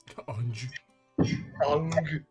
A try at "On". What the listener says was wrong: Or you just say on. Be like the G is silent.